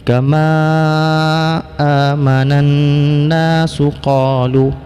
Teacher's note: Hukum bacaan alif lam syamsiyah adalah idgham. Karena nun ini merupakan huruf yang bersifat dengan gunnah, dengan dengung, maka ini dibaca dengan idgham ma'a gunnah.